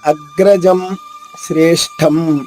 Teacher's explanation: అగ్రజం జా తర్వాత అనుస్వరం ఉంది, సున్నా, అది మాలా పలకాలి